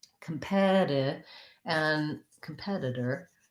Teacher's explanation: Both of these T's, because they don't have a stressed syllable after them and they're between two vowels, they follow the rule of becoming more of a flap T. So that's like a light D.